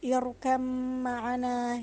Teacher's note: Yang kedua ialah ba sukun bertemu mim, harus dibaca irkam ma'ana, yakni dibaca secara langsung tanpa mengkolkolakan huruf ba.